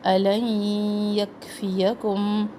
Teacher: نون نہیں پڑھیں گے. لام کو فوراً یا سے ملا دیں گے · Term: ادغام